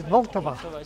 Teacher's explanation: the L in Vltava is stressed